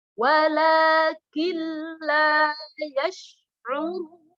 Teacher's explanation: Masuk dengan suara dengung. Nun sukunya lebur, langsung masuk la. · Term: idgham bila gunnah